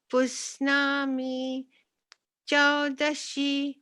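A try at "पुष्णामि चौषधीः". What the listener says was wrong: It's Pushnami Chaushadhihi. The Sha comes first. Like we say Aushadhi in Hindi, which means medicine.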